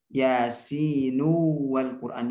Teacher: yasinu wal Quran, jadi diidghamkan ke waw.